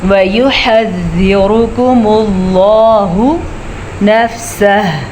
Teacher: سب لفظ کو اپنے حساب سے ہم پڑھیں گے جتنی ان کی مقدار بنتی ہے، لیکن یہاں پہ لفظ اللہ کو ہم پور بھی پڑھیں گے اور لام کے اوپر کھڑی زبر ہے تو ہم اسے کھینچ کے بھی پڑھیں گے